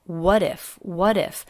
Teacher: part of the same word these two words link together so that t does come between two vowels and it is a flap t that flap t connects the two words